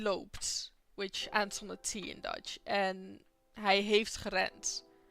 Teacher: you pronounce the D and the T the same at the end of a word. Hij loopt, which ends on a T in Dutch, and hij heeft gerend, which ends on a D in Dutch.